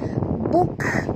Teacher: bunyikan hamas pada kaf